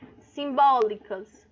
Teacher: O bó é minha sílaba tônica, é a mais forte